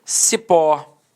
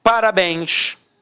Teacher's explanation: Repare que a sílaba tônica é a última